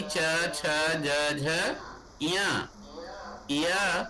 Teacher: इनका उच्चारण स्थान तालु है, इसलिए ये तालव्य वर्ण कहे जाते हैं